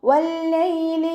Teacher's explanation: വാവ് ഉച്ചരിക്കുമ്പോൾ ചുണ്ടുകളൊന്ന് വട്ടത്തിൽ പിടിച്ചിട്ട് ഉച്ചരിക്കുക. ലാമിന് ശബ്ദ വന്നു 2 ഹർഫുകൾ ഉച്ചരിക്കുന്ന കനം കൊടുക്കുക.